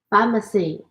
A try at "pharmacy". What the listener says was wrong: Good. You corrected yourself. Pharmacy.